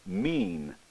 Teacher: vowel e the velopharyngeal port would generally be closed e e when saying the word mean however the port is open throughout the entire production